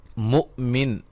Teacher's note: یہاں حمزہ کو جھٹکے سے پڑھیں گے